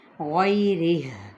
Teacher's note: جب وقف کر دیا تو ہا کو کیسے ادا کریں گے، وقف کی صورت میں غیرہ، یعنی ہا کی آواز ضرور نکالنی ہے